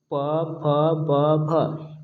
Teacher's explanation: ब का उच्चारण करते समय हम ओष्ठ का इस्तेमाल करते हैं, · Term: ओष्ठ व्यंजन